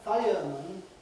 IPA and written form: ˈfaɪəmən (fireman)